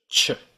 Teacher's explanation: It's actually two sounds stuck together in this case. It's a t and a sh.